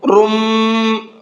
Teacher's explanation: تنوین میں جو نون کی آواز نکلتی ہے، اب وہ نون کی آواز نہیں نکلے گی بلکہ میم کی آواز نکلے گی